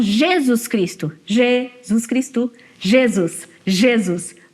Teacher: A gente tira o acento do ZUS e põe no G. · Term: stress shift